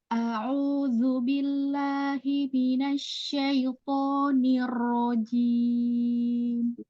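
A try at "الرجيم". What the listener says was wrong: Rojim, ro-nya jatuh duluan, hati-hati ditahan. Ada tasdid ya. A'udzu billahi minasyaitonir rajim. Pelan aja. Rojim nih ya, ada tamtib di situ, hati-hati. Nirro, langsung coba ke ro-nya. Nirrojim. Nir, bukan nir. Ada ayunan di situ. Nggak perlu ayun. Langsung ke ro. Nirrojim. Nirrojim. Untuk nirrojim menurut tasdid, hati-hati.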